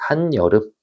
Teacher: 접사 한 뒤에서 반모음 이로 시작하는 어근이 와서 니은이 첨가되는 현상. 없던 것 중에 니은이 들어온 거죠. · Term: 니은 첨가